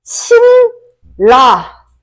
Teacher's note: 뒤에 있는 리을이 앞에 오는 종성 자리에 니은까지도 리을 발음으로 만든다 라고 해가지고 라라고 합니다. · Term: 유음화